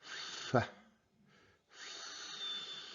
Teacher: you put your upper teeth just above your lower lip and then you try to expel the air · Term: the f sound